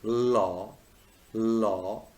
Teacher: your tongue tip touches the alveolar ridge, and what happens? The air stream flows around the sides of the tongue. So there is a kind of flow, there is a kind of wave in the air stream. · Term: lateral liquid